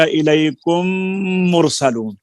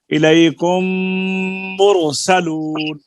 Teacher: جیسے الیکم مرسلون، تو اب چونکہ میم کے اوپر شد پیدا ہو گئی ہے، چاہے وہ ادغام کی وجہ سے ہی ہوئی ہے، تو اس شد کی وجہ سے اب یہاں پر ایک الف کی مقدار میں غنہ کیا جائے گا، اور اس کو ادغام صغیر مثلین کہتے ہیں. ادغام تو اس لیے کہا کہ پہلی میم دوسری میم میں داخل ہو گئی